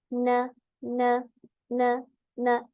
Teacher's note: जुबान की नोक ऊपर वाले दांतों के लिसा पे लगती है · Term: नून का मखरज